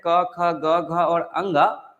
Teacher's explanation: क वर्ग के जो भी अक्षर होते हैं क ख ग घ और अंग यह सब के सब जो है कंठ से बोले जाते हैं